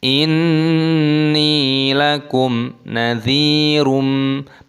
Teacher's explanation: mim sukun bertemu dengan nun hukumnya dibaca idhar syafawi, dibaca jelas